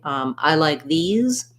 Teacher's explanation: if i'm saying i like these these is stressed